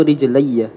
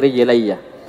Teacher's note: Ya mutakallim ketika sebelumnya ya juga maka di fathah. Ya sukun ketemu ya di idgham jadinya rijilaiyaah.